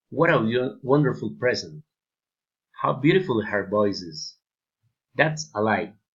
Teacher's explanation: Exclamatory sentences, falling intonation.